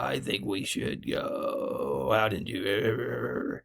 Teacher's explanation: we can talk about vocal fry which the pitch is unusually and chronically low with tight vocal folds and sounding like a poorly tuned motorboat engine